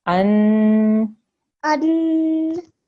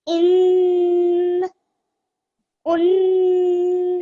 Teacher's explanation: And whenever we say a letter with a fatatain, a kasratain, or a dhammatain, we have to make a stretched nasal sound at the end of each word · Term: tanveen